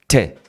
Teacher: Não tem como falar rápido, porque o T é explosivo, né? Eles chamam de plosives.